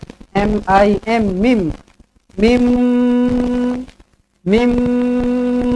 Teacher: jumpa dengan mim sabdu terus rapatkan bibir dengungkan dua harakat